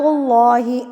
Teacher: یہ لفظ اللہ اور اللہ سے پہلے پیش، تو جب پیش آ جاتی ہے تو اللہ کو پور یعنی کہ ہیوی پڑھا جاتا ہے، یعنی کہ ہونٹ تھوڑی سی گلائی کی طرف جائیں گے